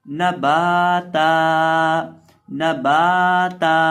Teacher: वक़फ़ के अंदर ता को एक अलिफ के बराबर लंबा करके पढ़ेंगे और बा को भी लंबा करेंगे एक अलिफ के बराबर और ता को भी लंबा करेंगे एक अलिफ के बराबर वक़फ़ की हालत में।